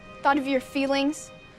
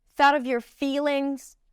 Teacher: She raises the pitch on 'feelings'. That word is more stressed.